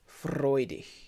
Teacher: The G at the end of a word in German is like a H, like quite a soft H almost. I mean, it's a soft G, but we don't have one in English, so H is sort of the simplest, closest thing we have.